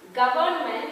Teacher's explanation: R is silent because the next is the consonant sound